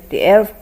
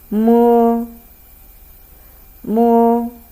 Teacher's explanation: please allow the airflow come out of your nose. Then let the voice come out of your mouth.